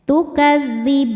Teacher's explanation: Ketika berhenti di ban, hukumnya adalah mad aridh lis sukun. Karena mad thobi'i bertemu dengan huruf yang disukunkan karena waqaf. Mad thobi'i nya fathah panjang pada huruf ba, huruf yang disukunkan nya nun.